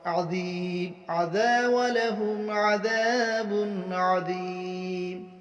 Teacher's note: تنوین کے بعد حروف حلقی میں سے عین آ رہا ہے، اس لیے اس کو اظہار کے ساتھ پڑھیں گے